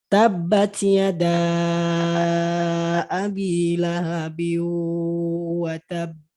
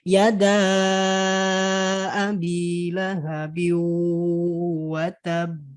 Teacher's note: Tapi si yada ini mad yada di kata yada bertemu dengan hamzah di kata abi. Maka apa? Dia jadi panjangnya bertambah 4 atau 5 harokat. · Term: mad jaiz munfasil